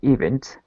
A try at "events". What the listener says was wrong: Maybe the intonation of events. Events.